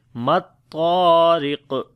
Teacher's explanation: Ra we read in light sound. On the qaf we make qalqala and heavy sound as well.